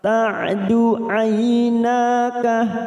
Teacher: jangan samakan dengan hamzah karena ain memiliki sifat tawasud dan jahar